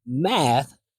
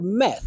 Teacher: this one happens when students don't create enough space for the a as in bat vowel, so it sounds like they're using the e as in bed vowel. So instead of hearing math, I hear meth.